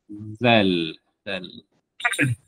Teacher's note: Huruf zal dikeluarkan dari hujung lidah yang bertemu hujung gigi seri atas.